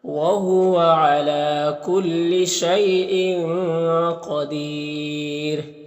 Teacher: یہاں پر یالین سے نرم آواز کے ساتھ جلد پڑھیں گے۔ یہاں پر تنوین کے بعد حروف اخفا میں سے قاف ہے تو اخفا ہوگا، قاف حروف مستعلیہ میں سے پر پڑھیں گے۔ یہاں پر یا مدہ ہے، اور وقف کریں گے تو یہ را کا پیش سکون سے بدل جائے گا، تو را کو باریک پڑھیں گے، اور یہاں پر مد عارض وقفی بھی ہوگا، تو اس طرح سے پڑھیں گے۔